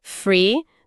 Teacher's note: Free de livre usa nosso f normal, dente no lábio.